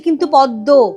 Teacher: কিন্তু পদ্ম ছিল দয়ময়, দেখো আমরা বলছি কিন্তু পদ্ম, পদ্মও বলছি না, তাহলে দয় দয় হয়ে গেছে, আগের দয়ের প্রভাবে মটা দ হয়ে গেল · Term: প্রগত